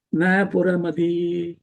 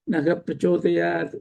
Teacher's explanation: If the word that follows naha is pakaram, starting with pa vargam, like puram here, then the visargam has to be pronounced. You can't say na puramati.